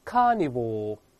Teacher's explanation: 英式发音的前后都没有卷舌音